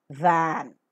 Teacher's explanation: articulation for as well as is the same accepting that for the vocal cords vibrate thereby making it voiced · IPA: /væn/